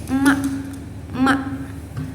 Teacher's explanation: Kemudian ada huruf Mim. Nah, huruf Mim ini keluar dari dua bibir, tetapi udaranya tuh keluarnya melalui hidung. Nah, dia itu bersifat majhur.